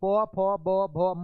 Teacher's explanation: यहाँ पे आपका राइट आंसर क्या हो जाएंगे? ओष्ठ, यानी आपके दोनों होठ सट रहे हैं। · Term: प वर्ग